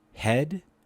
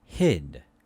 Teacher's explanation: these are both front lax vowels however e is a mid vowel and is a high vowel